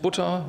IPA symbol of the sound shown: ʊ